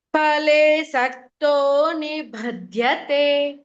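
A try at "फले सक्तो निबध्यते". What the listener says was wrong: பலே சக்தோ, நீங்க வந்து பா மகாபிராணாவா சொல்றேன். பா மகாபிராணா இல்ல. நீ பத்தியதே, அந்த இதுதான் மகாபிராணா. நீ பத்தியதே.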